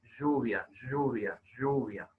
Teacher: palatal sonoro o sea no es cualquiera es como un h una h que se articula con las cuerdas vocales sonando y vibrando